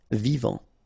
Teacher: Final T not pronounced.